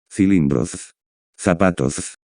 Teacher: With the Ceceo or lisp, all three consonant letters sound like the soft TH sound in English.